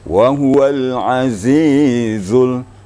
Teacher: dirapatkan giginya, kemudian didorong dengan lidah, akan keluarlah suara zai. Wa huwal azizul ya, agak ditekan ya.